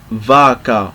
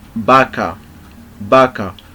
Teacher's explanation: we don't say vaka no we say Baka Baka we pronounce this as B